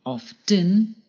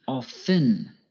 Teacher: Often can be pronounced two ways, by pronouncing the T, often, or by not pronouncing the T